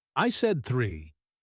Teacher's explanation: she is emphasizing 3 to correct 4. The stress tells you that this is the important information.